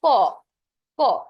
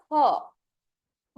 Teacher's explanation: কিন্তু তুমি উচ্চারণ করো খ। খ, তখন কিন্তু তোমার অনেক বেশি নিঃশ্বাস বের হবে, অতিরিক্ত নিঃশ্বাস তোমার বের হবে, সেই কারণে এইটাকে বলা হয় মহাপ্রাণ।